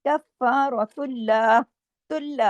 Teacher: कफ़ारतुल्लाह, इधर नहीं, इधर लाम, ये अल्लाह का नाम नहीं है, इसको हैवी नहीं करेंगे, रा को हैवी करेंगे, लाम को नहीं